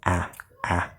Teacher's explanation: Very open, ah, ah, and use the front part of the tongue.